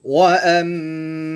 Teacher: 3 hitungan. Nah, itu setiap dengung 3 hitungan.